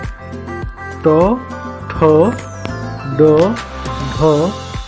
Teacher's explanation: मुंह के भीतर छत का अगला भाग इसका प्रयोग किया जाता है। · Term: मूर्धा